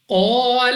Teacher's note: قاف مستعلیہ میں سے ہے، موٹا پڑھنا ہے منہ اور آواز کو کھول کر. الف سے پہلے زبر الف مدہ 2 سیکنڈ تک لمبا کرنا ہے.